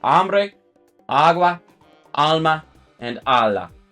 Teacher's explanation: the one that's going to be stressed in those words and because these are two syllable words obviously that means that the first syllable is going to be stressed